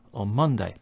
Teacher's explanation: And in the phrase on Monday, here we have a n sound at the end of on, followed by a m sound at the beginning of Monday. So this causes the n sound to change to be like a m.